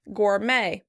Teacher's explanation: Americans are stressing that second syllable, the end of the word